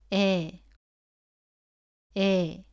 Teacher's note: 애보다 입을 작게 벌리고 발음합니다